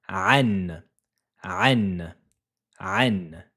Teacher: C'est pour signaler qu'il faudra faire un nasillement au niveau de la cloison nasale